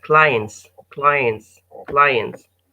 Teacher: so the T is missed out